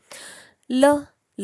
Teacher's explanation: ल ल म्हणत असताना आपला अहम दंत्य म्हटलेलं आहे. अहम दंत्य आपण ज्यावेळेस ल म्हणतो त्यावेळेस नकळत जिभेचं पुढचं टोक हे दातांना टच होतं